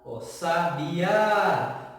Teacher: Percebam que o A é a nossa sílaba tônica, porque é a sílaba que mais se estica. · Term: oxítona